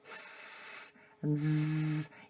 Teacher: You can't hold a p, but a s and a z you can keep hold of, and that's why you know that they are fricatives. And they are quite challenging because you have to hold them to create the sound.